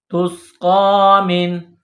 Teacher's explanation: نون ساکن کے بعد عین ہے، حروف حلقی ہیں، تو یہاں نون ساکن پر غنہ نہیں کریں گے